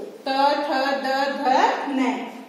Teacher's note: त वर्ग में त, थ, द, ध, न और इसका उच्चारण स्थान दंत है। जब हम इनका उच्चारण करते हैं त वर्ग का, तो हमारी जो जिह्वा है वो किसको स्पर्श करती है, दंत को